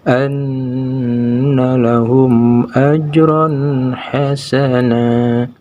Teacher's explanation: Maka tanwin fathahnya itu harus dibaca jelas seperti membaca huruf N. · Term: idhar